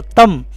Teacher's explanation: ہدایت نمبر 2، بعض لوگ اقلاب کرتے وقت نون کی ملاوٹ کر دیتے ہیں، یہ طریقہ درست نہیں، بلکہ یہاں صرف میم پڑھنی چاہیے، نون نہیں پڑھنا چاہیے، کیونکہ نون میم سے بدل چکا ہے